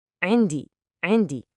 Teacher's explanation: The word indi starts with a really tricky sound called the ain. It's a constriction way back in your throat.